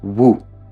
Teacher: The root word on the right is romanized with two Us, and is pronounced like [wu]. Kind of like the English word “woo”, but again, with a shorter vowel